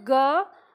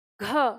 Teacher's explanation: तो ग की तुलना में घ में ज्यादा हवा निकलती है। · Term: महाप्राण